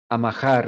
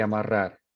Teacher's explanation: velarización de la R es algo muy puertorriqueño